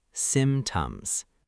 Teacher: The P is silent in casual speech for some speakers, but it's clearer to pronounce it lightly.